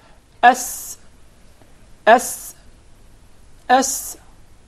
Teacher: Did you notice the whistle while pronouncing the letter Sin?